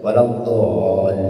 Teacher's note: dad ya walad dolin DD itu Huruf tebal p d ya huruf Dad itu huruf yang tebal kalau tidak tebal maka dia menjadi huruf